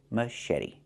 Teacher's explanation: The t makes a fast d.